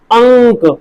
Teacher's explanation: मुंह से कम आ रही है और नाक से ज्यादा आ रही है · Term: अनुस्वार